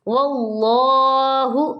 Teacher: لفظ اللہ سے پہلے زبر آ گیا تو ہم نے اس اللہ کو موٹا کر کے پڑھنا ہے